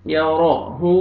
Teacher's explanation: را کو مرفتح ہے، را کو موٹا کر کے پڑھیں گے